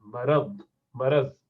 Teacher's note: اگر ضاد کو صحیح سے نہیں بھی بولنا, اردو کے اسٹائل میں بولنا ہے, تب بھی را پر زبر ہونا چاہیے.